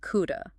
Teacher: by reducing have to this lazy A sound, we make these modal verb phrases incredibly quick and effortless